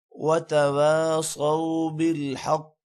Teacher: قاف پر قلقلہ بھی ہوگا اور قاف موٹا بھی ہوگا